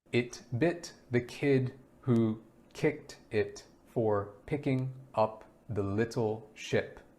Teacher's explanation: the short closed jaw smiling sound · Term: I sound